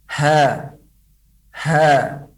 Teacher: ketika diucapkan huruf H pita suara terbuka dengan santai · Maka pada gambar yang pertama ini yang paling dekat dengan gambar keseluruhan, itu huruf ha ketika keluar, maka pita suara terbuka dan tidak terbuka lebar. Ketika diucapkan huruf ha, pita suara terbuka dengan santai.